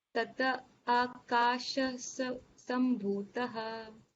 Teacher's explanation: This visarga we are converting into a half sa sound.